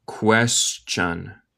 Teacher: El T suena como CH aquí.